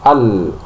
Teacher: ketika mengucapkan al itu maka pita suara ee itu hampir tertutup ya sehingga menyebabkan tidak ada hembusan nafas yang keluar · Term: jahar